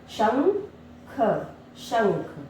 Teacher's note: जब हम अंग की मात्रा का उच्चारण करते हैं तो हम जो ध्वनि अंग की मात्रा की है हमारे नाक और मुंह दोनों से आती है, इसलिए हम इसे अनुस्वार भी कहते हैं।